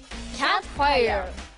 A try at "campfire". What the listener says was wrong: キャじゃない campfire